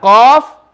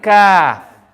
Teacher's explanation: The only difference, Qaf is when the extreme back of the tongue touches the palate, and Kaf is when the back of the tongue touches the palate. So Qaf is when it goes more back.